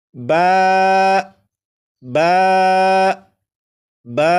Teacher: با کو 1 الف کے برابر کھینچ کر پڑھیں گے